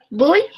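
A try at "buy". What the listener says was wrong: Bye. Se pronuncia bye, darling. Se escribe voy, pero se pronuncia bye.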